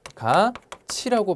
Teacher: 티귿이 이를 만나 치읒으로 변했습니다. 이런 현상들을 우리가 구개음하다라고 얘기를 합니다. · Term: 구개음화